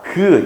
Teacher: 실제로 어금니로 소리를내는게 아니라 어금니 부근에서 나는 소리예요